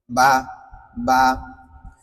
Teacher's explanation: কারণ বাটা উচ্চারণ করার সময় দুইটা ঠোট। এই যে সামনের উপরের নিচের দুইটা টুট আস্ত করে লাগাইবেন হালকা করে আবার ছেড়ে দিবেন